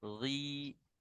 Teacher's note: Nah ketika kasroh dia berkurang kadar tebalnya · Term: tafkhim nisbi